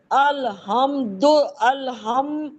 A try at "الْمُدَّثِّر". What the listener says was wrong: آپ نے کیا پڑھا؟ الحمد تو نہیں پڑھا. المدثر. وقف کریں.